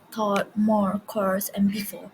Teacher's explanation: This vowel is in words like thought, more, course, and before. It is an open mid-back rounded vowel.